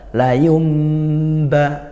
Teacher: yang awalnya Nun dibalik bunyi mim karena bertemu ba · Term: yqlab, iqlab